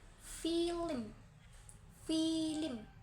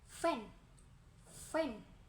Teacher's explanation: Yang keempat, fonem dan konsonem F, bibir bawah menyentuh bibir atas, udara dihempaskan melalui celah sempit menghasilkan gesekan dan pita suara tidak bergetar